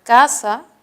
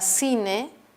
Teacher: puede sonar en la palabra casa como un sonido oclusivo y también puede sonar en la palabra cine como un sonido fricativo